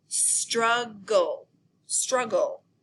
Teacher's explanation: I see the V, C, C, C, V pattern in the middle of it, and I also see the LE ending. I know that the LE ending makes the final schwa plus the L sound, and that it can combine with a consonant to form a final unstressed syllable.